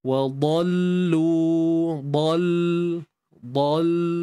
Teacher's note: Waw ni muncul, huruf dha tebal.